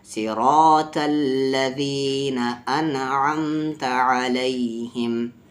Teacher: सा हुरूफ मुस्तालिया में, साद हुरूफ मुस्तालिया में है यानी हेवी लेटर्स में है, ता भी, और यहाँ रा हेवी हो रहा है क्योंकि रा पर ज़बर है।